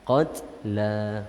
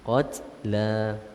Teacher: Jadi ta yang sukun itu kita tahan suara kemudian lepaskan sedikit angin lah.